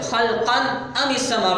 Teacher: تو اس کی وجہ یہی ہے کہ تنوین کے بعد حرف حلقی حمزہ کھڑا ہے، تو اس نے آ کر کے غنہ کو اڑا دیا، ختم کر دیا۔ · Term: غنہ ختم ہو گیا